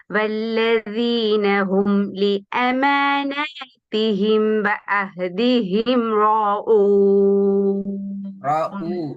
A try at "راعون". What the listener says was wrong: ரா ஊ போதாது. தொண்டையுடைய கீழ் பகுதிக்கு போறது போதாது. ரா ஊ அல்ல, ராஊன். கவனமா போயிட்டு கேட்டு பாருங்க. உச்சரிக்கு நேரம் தொண்டையில எந்த பகுதியில் சவுண்ட் வருதுன்னு பாருங்களே. ஐன் எங்க இருந்து வரணும்? இதெல்லாம் உங்களோட டோன்ல வர பிரச்சனை. உண்மையில உங்களுக்கு ஐன் தொண்டையெல்லாம் உச்சரிக்கணும்னு தெரியும். ஆனா உங்களோட டோன், உங்களோட இயல்பாகிற டோன் உங்களை உறுதியில அந்த இடத்துக்கு உச்சரிக்கிறதுக்கு. இது உண்மையில பிழை அல்ல. இது கடுமையான தவறு இல்லை. ஆனா எங்களோட ஓதல் பிழை அது.